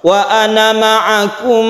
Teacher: Ana itu dipendekkan apabila kita washal wa Ana ma'akum panjang mim bertemu dengan mim idgham mimi kemudian